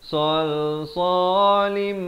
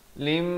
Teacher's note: datang mim masuk terus berserta dengung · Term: idgham bi gunnah